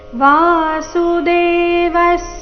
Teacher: ವಿಸರ್ಗದ ಉಚ್ಚಾರಣೆ ಅರ್ಧ ಸ ರೀತಿ